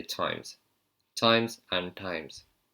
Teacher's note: British people would put their tongue further front of their mouth, just behind your front two teeth, and hit it flat on that flat part there.